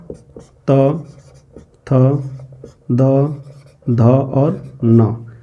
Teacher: ठीक है, ऐसे वर्ण या अक्षर, ठीक है ना, जो दांत से बोले जाते हैं। दांत माने जिह्वा दांत को स्पर्श हल्के से करती है तो ये वर्ण उच्चरित होते हैं। ऐसे वर्णों को हम दंत्य वर्ण या दंत्य वर्ग का वर्ण कहे जाएंगे, दंत्य वर्ण कहेंगे।